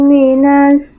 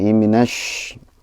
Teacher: Cuman shinnya itu masih kayak sin ya. Masih ke sin. A'udzubillahi minas, seharusnya minash.